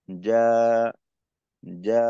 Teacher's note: শেষটা এমন ভাবে হবে যেন হামজার মতো না হয়, বা হলকে শুরুতে চাপটা চাপ লাগার কারণে আওয়াজটা হামজার আওয়াজটা বের হয়ে না যায়, স্বাভাবিক।